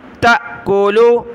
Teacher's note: حمزہ ساکنہ جھٹکا دیا